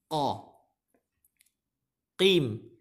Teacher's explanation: Qafnya adalah termasuk huruf pangkal lidah. Huruf lidah yang paling dalam.